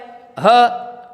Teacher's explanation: ह का उच्चारण भी किससे किया जाता है? कंठ से ही किया जाता है।